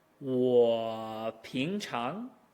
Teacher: This is what our Garrett Lauscher likes to refer to as a super third tone. The 3 drops and then immediately rises into the second tone as if it were one tone.